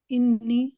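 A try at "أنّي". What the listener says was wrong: अन्नी, इन्नी नहीं बोलना, अन्नी।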